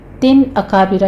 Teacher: तिन अकाबिरा, यहाँ पे तनवीन का कायदा इजहार हल्की होगा और अकाबिरा में रा मुफ़ख़म है